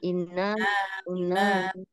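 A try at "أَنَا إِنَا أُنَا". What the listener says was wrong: Jangan ditahan dulu. Tadi saya masih mendengar ana inna. Nah, jangan ditahan dulu, tapi dia datar saja. Ana ina na ana ina una. Jadi jangan ditambah tasydid dulu ya, jangan ditambah tekanan.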